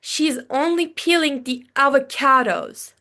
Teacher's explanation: Like I emphasized, I stressed the word of avocados, right?